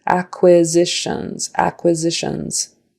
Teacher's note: That S in the middle, pronounced like a Z.